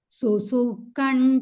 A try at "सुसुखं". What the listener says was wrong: Susukang, not kan, susukang. Kangana, kangan. Kang, K-A-N-G.